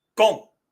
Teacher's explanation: the O in Gong is a first tone. So it is flat and even gong. It doesn't rise. · It doesn't rise. It doesn't dip. It's a flat and even.